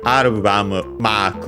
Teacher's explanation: mark is accented like in English on the first syllable